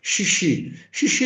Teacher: Porque é um fonema fricativo que a gente produz sem abertura da boca, e o I é uma vogal, mas é uma vogal baixa, que não necessita de abertura